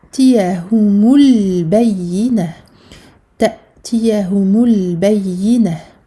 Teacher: مساكين حتى donc shadda plus 2 temps تأتيهم donc on a ici hamza sakina donc on coupe le son ici on referme les cordes vocales